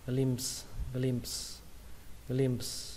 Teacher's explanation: Nếu các bạn đọc chậm hơn thì các bạn đọc chữ p ra cũng được, p âm gió xong kết thúc bằng âm sờ âm gió luôn.